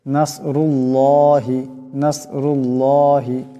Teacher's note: হবে নাসরুল্লাহি এখানে আল্লাহর লামের ডাইনে পেশ আছে আওয়াজ আল্লাহর লামের আল্লাহর লামকে মোটা করে পড়তে হবে